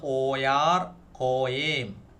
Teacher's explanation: പാശ്ചാത്യ സുറിയാനിയിൽ ഈ നടുക്ക് വരുന്ന ആലപ്പ് യായായിട്ടാണ് ഉച്ചരിക്കുന്നത്.